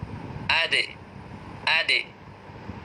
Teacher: যখন সুকুন আসে দাল এর উপরে তখন দালটাকে কলকলা করে পড়তে হয়।